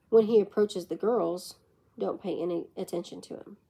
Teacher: the pitch of the voice will continue dropping while saying the girls and jump up at don't